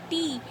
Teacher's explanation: the tip of our tongue touches the upper part of our jaw, inside